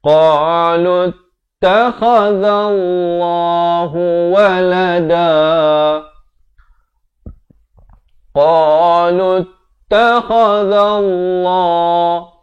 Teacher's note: waw, alif zaidah, hamzah wasal, 3 huruf ini tidak ada pada bacaan, hanya ada pada tulisan.